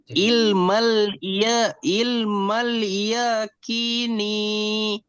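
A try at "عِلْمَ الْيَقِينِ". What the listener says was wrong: এটা টানাবে না, ইয়াকিনি। না, আপনি কেটে কেটে পড়ান তো এটা বানান করে পড়েন।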